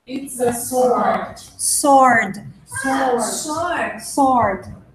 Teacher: You don't pronounce the W.